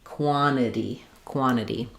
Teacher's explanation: In that case, um when we when we drop the t of the nt, it's going to sound like quant and then this t becomes more of a flap